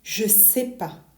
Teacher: native speakers drop that negative ne entirely and they sort of smash the remaining words together.